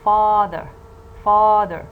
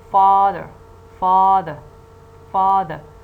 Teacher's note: father you see that the first syllable is the strong syllable the first syllable is this stressed syllable because it contains a strong vowel